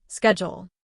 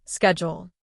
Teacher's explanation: In American English, people often say schedule with a sk sound, schedule. In British English, it is often pronounced with a sh sound, schedule. Same word, different sound.